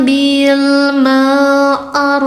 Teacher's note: U-nya empat dibaca panjang